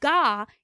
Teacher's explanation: gaw is all the way in the back with the movement of the velum or soft palate